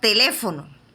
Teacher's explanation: la sílaba que más resalta o recae el golpe de voz es en le. Es la que tiene mayor intensidad. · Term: sílaba tónica